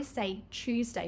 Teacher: I say Tuesday with the ch, but you might hear some people say Tuesday to you, blending it together, Tuesday.